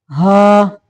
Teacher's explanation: ये हलक का वो हिस्सा जो सीने की तरफ है वहां से ये हा निकलता है